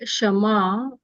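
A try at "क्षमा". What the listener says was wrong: No, that is Kshama, Kshama. Kshama. Kshama, that is Kshama. There is a K before that.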